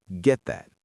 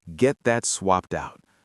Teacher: You put your tongue in position to say the T and get, but you do not release the air. Get that, not get that. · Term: stop T